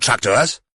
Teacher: changed the vowel sound of the O from an ER to a pronounced OR